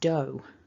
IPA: əʊ